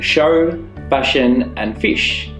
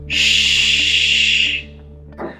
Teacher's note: Shh is a long sound without using your voice made by pushing air through a tunnel in your mouth made with your tongue and the roof of your mouth escaping through your teeth